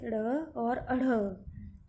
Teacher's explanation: जो हमारी जीभ जो है वो तालु को एक झटके से छूकर नीचे गिर जाती है। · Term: उत्क्षिप्त व्यंजन